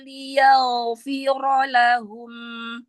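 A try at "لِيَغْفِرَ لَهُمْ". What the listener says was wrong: Ya, yaghfi. Angkat lagi pangkal lidahnya.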